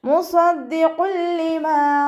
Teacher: തെൻവീനിന് ശേഷം ഇദാം ബിലാഗുന്നയുടെ അക്ഷരമായിട്ടുള്ള ലാമ് വന്നു. തെൻവീനിലുള്ള നൂനിനെ ലാമിലേക്ക് ലയിപ്പിച്ച് ഒന്ന കൊടുക്കാതെ ഓതി കൊടുക്കുക